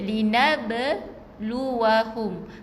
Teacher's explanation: Kita kena lantunkan sikit untuk huruf qalqalahnya huruf ba.